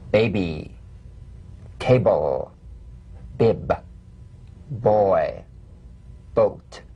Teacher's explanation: Play this on the springing away from contact, not by pressing the lips together. You'll feel a gentle voiced pulsation on the lips like a delicate, crisp tap. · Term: drum beat B